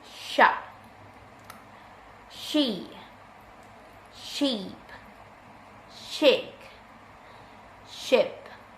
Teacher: Voiceless palato-alveolar fricative sound